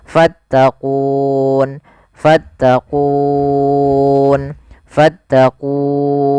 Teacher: Awalnya kan ku 2 harokat, karena ada sukun arid menjadi kita boleh membaca dengan 3 pilihan, boleh 2 harokat, boleh 4 harokat, boleh pula 6 harokat. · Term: mad arid disukun